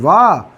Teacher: वकारस्य दंत ओष्ठः, वकारस्य दंतोष्ठम